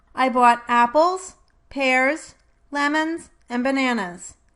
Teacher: Listen to how all but the last item in this list is spoken with a rising intonation.